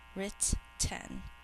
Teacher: In normal speech, we only hear one of the T sounds, but we think to spell both of them so that we get the double letter.